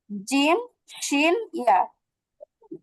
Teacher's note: তাহলে লিসান, এই জিহ্বার মধ্যখানটা ঠিক তার বরাবর উপরে তালুর সঙ্গে লাগিয়ে উচ্চারিত হবে তিনটা হরফ